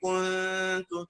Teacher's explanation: لأنه خلي بالك دايما الناس بتقول لي كنت، ما بيلحقش يرجع تاني، بيقول كو، النون ساكنة بين ضمتين وفيها إخفاء